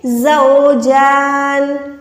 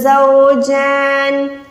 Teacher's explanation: زا پہ وسل ساؤنڈ دے رہی ہوں